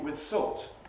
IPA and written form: wɪð ˈsɔːlt (with salt)